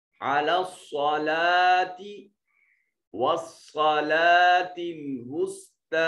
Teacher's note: وصا میں صاد پھر موجود ہے، اس کو موٹا اور پر کر کے پڑھیں گے. وسطی میں طا کو موٹا کریں گے اور ایک الف کے برابر لمبا بھی کریں گے. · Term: مستعلیہ